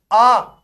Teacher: आ में पूरा मुंह खुला।